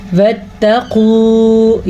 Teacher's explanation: واتقوا یہ بھی موٹا قاف ہے تو اس کو ہم پر پڑھیں گے